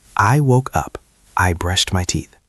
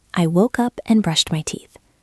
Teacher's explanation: When you use and, you do not stop. You do not drop your voice. You keep the energy moving forward.